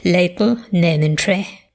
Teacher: The diphthong in goat has a central or even slightly front starting point.